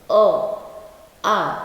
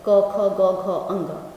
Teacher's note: जितने क वर्ग हैं और अ आ और साथ में ह, इतने जो वर्ण हैं वो कंठ से बोले जाते हैं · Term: कंठ्य